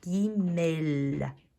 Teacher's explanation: Não vai ser que nem no português que o som do L no final se transforma em som de U. Não, você sempre pronuncia o som do L.